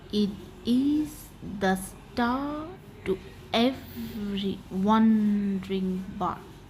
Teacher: the first syllable goes unstressed and second syllable goes stressed